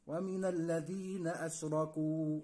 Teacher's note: الذال لابد ان انت تطلع لسانك فيها